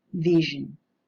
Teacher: The voiced alveolar fricative coalesced with the palatal semivowel and gave birth to a voiced palatal fricative sound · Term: coalescent assimilation